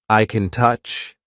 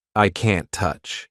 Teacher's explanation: We just have the long A vowel sound, like in car, and then the N sound, con, touch. Focusing on the long vowel sound rather than listening for the full negative contraction is a good way to differentiate between the positive and negative forms in British English.